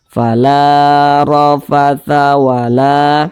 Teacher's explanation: huruf ro dibaca tebal karena dia memiliki tanda baca fathah. Dibaca tebal atau dibaca tabkhim.